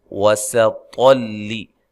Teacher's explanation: سین کو باریک سیٹی سے، طا کو خوب موٹا ادا کرنا ہے،